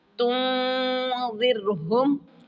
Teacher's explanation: را کے نیچے زیر آ گئی ہے را سے پہلے والے حرف کے نیچے، تو اس لیے اس کو باریک کریں گے